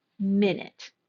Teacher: we're going to stress the first syllable of this word minute